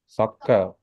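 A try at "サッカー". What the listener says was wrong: not Su, right? Ka. Elongated, right? Sakka. It's different if you don't elongate this, right? If you just say sakka, it's a Japanese word meaning a writer. So sakka is different from sakka. This is sakka.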